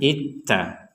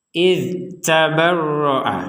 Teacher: Nah, kemudian di sini yang juga perlu ditekankan, huruf dzalnya jangan dimasukkan ke huruf ta sehingga terbacanya itta. Jadi huruf dzalnya ini tetap harus jelas terbacanya. Jangan sampai masuk kepada huruf ta. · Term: dzal sukun